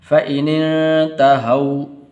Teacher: یہ واو حروف لین میں سے تو لمبا نہیں کرنا